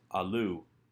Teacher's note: comes from the verb allah which is a third hey verb hey before a strong vowel like shurik will drop completely leaving us with allu